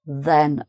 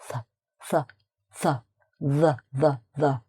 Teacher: your tongue is touching your front teeth, top teeth.